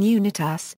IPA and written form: juːˈnaɪtɨs (Unitas)